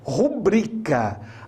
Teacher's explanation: portanto é rubricá e não rubricá a pronúncia correta é rubricá a sílaba mais forte é o bre e não o ru